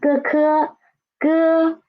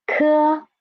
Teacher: And ge, softer air, ke, stronger air.